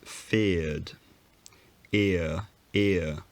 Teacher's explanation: you'll notice that there's no longer any error sound it wasn't feared but the tongue does retract towards the center of the mouth before the consonant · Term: off glide